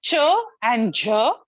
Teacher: this is a sound of affricate affricate the only two sounds of affricate